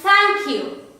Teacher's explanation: when the tip of the tongue touches the teeth, the upper teeth, it is known as a dental consonant sound. For instance, the sound th, as in thank you.